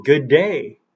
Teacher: good day sounds like it's one D but it's not one D, it's two Ds